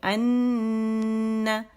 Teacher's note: اسے نون اور میم پہ اگر شد ہو، حرف غنہ مشدد اسے کہتے ہیں، اور اس میں اکمل غنہ کا موسٹ کمپلیٹ غنہ ہوتا ہے اور لانگیسٹ غنہ ہوتا ہے